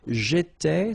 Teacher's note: so final S not pronounced